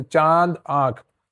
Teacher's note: अनुनासिक ध्वनियां मुख और नाक दोनों से बोली जाती हैं।